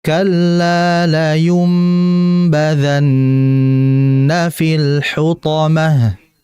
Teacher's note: Kemudian badhanna. Nunnya di sini bertasydid maka ditahan.